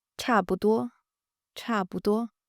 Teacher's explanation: 多 flat and high, first tone.